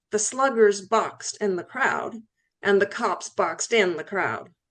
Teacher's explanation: what's known as final lengthening in phonological phrases